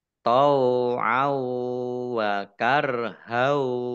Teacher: fathah tanwin bertemu dengan huruf wawu, bacaan idgham bi gunnah, mendengung wawu. Tau'au wa karhau.